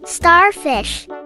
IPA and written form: ˈstɑːrˌfɪʃ (Starfish)